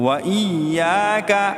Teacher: یا کو ایک الف کی مقدار لمبا کریں گے کیونکہ یہاں الف مدہ ہے، الف خالی ہے اور اس سے پہلے حرف پر زبر ہے، تو اس کو الف مدہ کہا جاتا ہے.